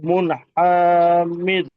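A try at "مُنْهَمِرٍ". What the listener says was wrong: হ্যাঁ, মুন হামির, টান দেওয়া যাবে না, এখানে কোনো মাত্রা নেই, মুন হামির।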